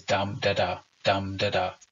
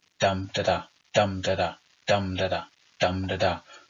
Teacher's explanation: these these little groups of syllables between the slash called feet a stressed syllable followed by two unstressed syllables we call that a dactyl